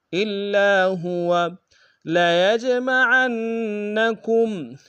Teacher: لیج میں یا کو جیم کے سامنے آئیں گے، جیم حروف قلقلہ میں سے قلقلہ کریں گے، عین کو نون کے سامنے آئیں گے، شد زور دیں گے۔